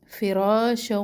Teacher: را الف مدہ اور را کو موٹا پڑھنا ہے